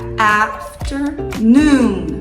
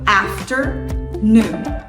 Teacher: Então a sílaba tônica vem no A e depois vai lá pro noon.